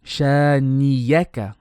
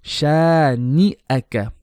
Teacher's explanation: You need to make the hamza very clear. The makhraj for the hamza is the bottom throat.